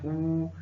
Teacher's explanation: जब भी आप होठ ऊ बोलेंगे तो होठ को आपको सिकोड़ना पड़ेगा, तो ओष्ठ से ऊ का उच्चारण स्थान होगा हर्ष ऊ।